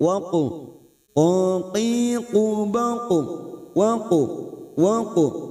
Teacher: Kita pantulkan dengan cara tafkim karena huruf qaf huruf isti'la. Pada saat memantulkan posisi bibir kita seperti orang cemberut. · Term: qalqalah sugra